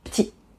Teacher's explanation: another one that is extremely common is petit, small. We tend to drop the E